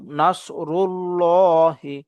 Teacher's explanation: আল্লাহ শব্দের লামটাকে পরব মোটা করে পড়ব মুখ ভর্তি করে আওয়াজ করব